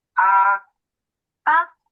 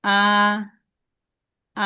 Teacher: এটা হচ্ছে first tone, flat হয়ে যাবে।